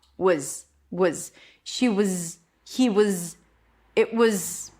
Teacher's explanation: When it comes to was, the W needs to stay, thank God. So all I do is reduce the vowel in the middle to a schwa. Was, she was, he was, it was.